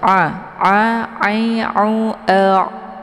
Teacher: Jangan dibaca lewat janur hidung. Tapi ain ini letak posisinya di tenggorokan tengah